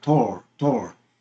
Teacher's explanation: 여기서 A는 O로 발음이 됐죠. 같은 A지만 O로 발음이 됩니다.